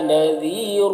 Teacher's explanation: را کو اوپر 2 پیش کی تنوین ہے، را کو پر پڑھیں گے